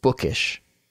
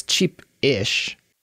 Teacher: It flows. There's no delay between book and ish. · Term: very smooth pronunciation